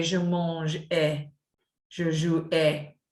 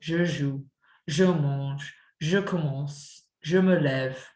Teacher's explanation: in the present tense, you very, very rarely hear that E sound in a verb.